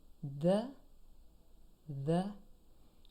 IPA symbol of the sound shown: ð